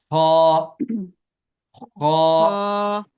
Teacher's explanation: یعنی گلے سے جو کھڑکھڑاہٹ کی آواز ہوتی ہے، تو خا کو ایسے ادا کرنا ہے. اگرچہ اس میں کھڑکھڑاہٹ تو نہیں ہوگی لیکن آغاز ایسی ہوگا.